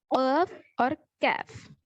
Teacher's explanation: اقصاء اللسان یعنی زبان کی جڑ، زبان کا آخری حصہ اوپر کے تالو کو لگنے سے یہ 2 حرف نکلتے ہیں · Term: حروف لحاتیہ